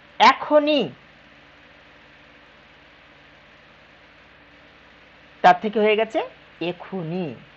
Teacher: এই যে নতুন একটা স্বর চলে আসলো, স্বর সঙ্গতি, এখনই থেকে এখুনি।